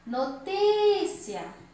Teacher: Notícia, a penúltima sílaba é a sílaba mais forte. Então, é o ti. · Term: paroxítona